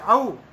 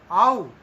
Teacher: जिसको हम औ बोलते हैं वास्तव में वह आउ, वहां पर आ और उ मिलकर के बने हैं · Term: कंठोष्ठ